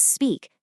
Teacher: Do not add an extra vowel sound. Remember, it's speak, not e-speak.